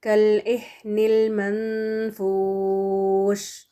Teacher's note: شین سے پہلے واو ساکن ہے، اور یہ مد، واو مد ہے دراصل، پیش کے بعد واو ساکن ہے نا، تو یہاں پر ہم اس کو 4 کاؤنٹس دے کر رکیں گے